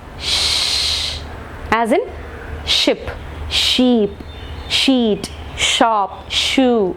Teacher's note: Palato-alveolar sounds. The tip or blade of the tongue is against the alveolar, along with the front part of the tongue is raised towards the hard palate, thus producing palato-alveolar sounds such as sh, j, ch and j.